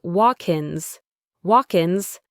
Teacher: that K sound at the end of walk links to the next word, ins. It sounds like walk-ins.